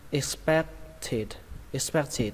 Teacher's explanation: các bạn lên giọng âm thứ 2 · Các bạn lên giọng âm thứ hai, âm back. Xuống giọng âm đầu tiên, X.